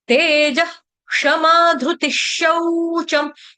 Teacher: त के साथ जो मात्रा लगी है वो है छोटी की मात्रा, यानी कि ति, ह्रस्व मात्रा। विसर्ग का उच्चारण करेंगे हलंत श। क्यों? क्योंकि आगे शौचम, श से शुरू होने वाला वर्ड आ रहा है